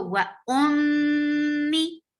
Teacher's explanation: gunna is keeping your sound in your nose, and it is a longer gunna